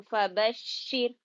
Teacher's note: شین پہ ذرا سختی کرنا کیونکہ تشدید ہے